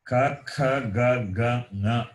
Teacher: the fifth letter of the class consonants, in addition to the respective place of pronunciation, they are also nasal.